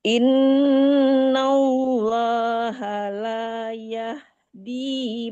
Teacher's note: Yahdi, bukan yahdil tapi yahdi, panjang dinya, ada ya mati di depan